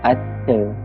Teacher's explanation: bunyi A di hujung akhir kata sesuatu perkataan akan menjadi vokal tengah